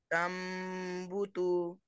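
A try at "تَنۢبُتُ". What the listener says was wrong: वो तू को नहीं खींचना। ऐसा बस।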